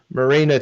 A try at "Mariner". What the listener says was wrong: Mariner. Yeah, Mariner. You said Marina, which makes it sound like a submarine.